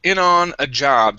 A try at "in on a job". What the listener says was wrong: Okay, instead of in, use a short I. In.